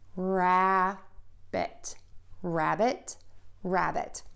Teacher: To do this, close your lips, open them up, voice box is on, short sound in there, your mouth is slightly open, and you should have the tip of your tongue behind your top front teeth and your lips are relaxed. And then end with the T by touching the tip of the tongue to the back of the top front teeth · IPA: /ræbət/